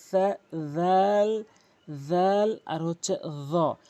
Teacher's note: জালটি জিহ্বার আগা দাঁতের আগা থেকে উচ্চারণ হয়